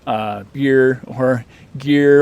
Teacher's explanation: these uh what we think of as voice stops tend to be just unaspirated